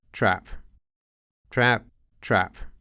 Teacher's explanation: Здесь язык находится в передней части рта, поближе к губам. Эти гласные стали более открытыми, то есть рот открывается чуть шире, и язык опускается ниже, чем для консервативного ААП. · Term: передние гласные